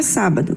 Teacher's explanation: Sua sílaba mais forte é o sa.